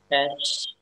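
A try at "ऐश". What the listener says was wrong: benar. Ash ya. Setuju ya, ash.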